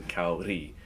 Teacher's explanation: It is phonetically spelled Kouree with an R like a soft D in Spanish.